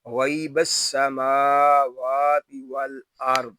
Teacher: یہاں میم اور واو کو ایک الف تک کھینچ کر پڑھیں گے کیونکہ یہاں کھڑی حرکات ہیں